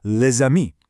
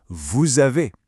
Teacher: You pronounce the consonant and it links the two words together into one smooth sound. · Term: Build that bridge